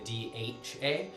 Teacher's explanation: we're adding a little bit of aspiration. So there's kind of the puff of air